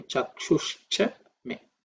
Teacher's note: But the visarga has become ish. So, that's a become chakshushcha me.